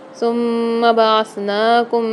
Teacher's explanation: ثم میں میم کے اوپر مشدد ہے، پر غنہ کر کے پڑھیں گے۔ بعثناکم میں نون کے اوپر کھڑا زبر آ رہا ہے، یہاں پر ایک الف میں دار کھینچ کے پڑھیں گے۔ اچھا، ثم میں یہاں پر زیادہ تر اسٹوڈنٹ کرتے ہیں کہ میم کو کھینچتے ہیں، کھینچنا نہیں ہے، صرف غنہ کرنا ہے، ثم نہیں پڑھنا ہے اس کو، ثم اس طریقے سے پڑھیں گے۔